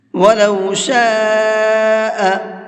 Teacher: یہ بڑا مد ہے تو اس کو 4 سے 5 الف کے برابر کھینچ کر کے پڑھیں گے